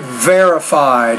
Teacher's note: just pronounce the V with a little more vibration so we know that it's not a b consonant sound